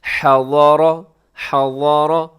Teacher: ضاد موٹا ہے، ہا کا خیال رکھیے گا، اور را بھی موٹا پڑھا جائے گا۔